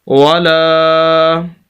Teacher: تو لام کے آگے یہ الف مدہ ہے تو اس وجہ سے لام کو لمبا کریں گے